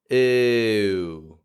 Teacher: It's a tense vowel, it's a diphthong, it's a moving sound. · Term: tense close U